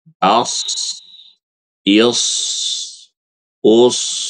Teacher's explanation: huruf shad itu pangkal lidahnya naik. Jadi bunyinya as is us begitu.